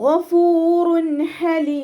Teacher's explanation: തെൻവീനിലുള്ള നൂനിന്റെ sound നമ്മൾ അവിടെ വ്യക്തമായിട്ട് കേൾപ്പിക്കണം ഫൂറ ശരിക്ക് നൂനിന്റെ സൗണ്ടിനെ വ്യക്തമായിട്ട് കേൾപ്പിക്കാം ഫൂറ ഹലീ ഇവിടെ തെൻവീന ശ്രദ്ധിച്ചാൽ